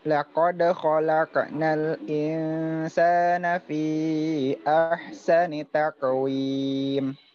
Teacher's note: Ingat itu huruf qaf ya, karena dia huruf tebal. Dia lebih ngarah ke o ya